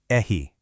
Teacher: Instead, think of it almost as a breathy H sound that starts way deeper in the back of your throat